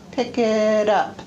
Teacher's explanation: The tongue just touches the top of the mouth very, very briefly. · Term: tap